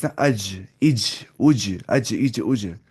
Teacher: जीम का मखरज मालूम हो गया जबान का बीच और ऊपर का तालुक